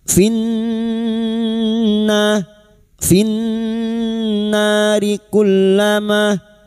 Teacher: Maka nun yang bertasdid ini kita dengungkan selama tiga harakat.